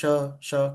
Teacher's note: श है बोल के श कंपन नहीं हो रहा।